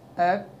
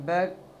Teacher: ता साकिन और काफ साकिन को पढ़ते हुए आवाज़ रुक जाएगी। जैसे हमज़ा त ज़बा अत, हमज़ा काफ ज़बा अक।